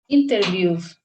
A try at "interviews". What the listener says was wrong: Interviews, correct.